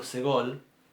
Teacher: el sonido es tan breve que casi parece que pongo la s y la g juntas